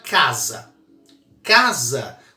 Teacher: casa a primeira sílaba é mais forte logo era uma paroxítona